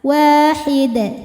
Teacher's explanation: Jika berhenti di hid, di sini ada hukum qalqalah kubra karena ada huruf qalqalah yang sukunnya itu karena berhenti. Tadinya tanwin dhammah kalau berhenti jadi sukun, maka dibacanya dipantulkan dengan pantulan yang besar. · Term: Qalqalah Kubro